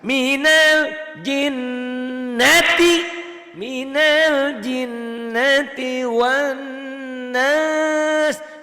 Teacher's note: Nas panjang karena ada madnya di ujung.